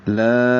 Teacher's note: لا 4 حرکات لمبا کریں گے کیونکہ یہ مد منفصل ہے. لا الف مدہ ہے اور اس کے بعد دوسرے کلمے میں حمزہ بشکل الف ہے.